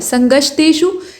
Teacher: इसको श उच्चारित करेंगे, ख नहीं, ये मूर्धन्य श है